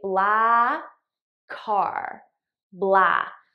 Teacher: I just eliminate one of the k sounds and I use it to link these two words together.